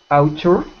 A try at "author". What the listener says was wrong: So we pronounce that not ow, even though it's A and U, we pronounce it like aw. Author. Author. Author. With your tongue out of your teeth like this.